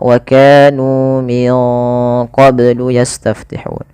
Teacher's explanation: ini nunnya disamarkan ke huruf qaf. karena dia ada bacaan ikhfa. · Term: ikhfa abad